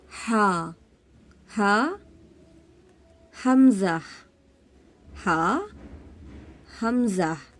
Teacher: हा हमजा दोनों का मखर एक ही है अकसा हलक से अदा होते हैं जो सीने की तरफ वाला हिस्सा होता है जो सीने के